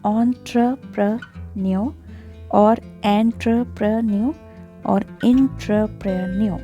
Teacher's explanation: in British English, we do not pronounce letter R in the end